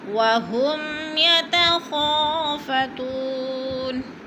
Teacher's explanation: یتخا کو تھوڑا سا ہم نے کھینچنا ہے، الف مدہ ہے۔